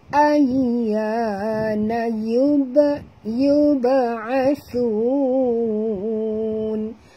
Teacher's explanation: ba ini bila mati di tengah-tengah kalimah, kita kena lantunkan bunyi dia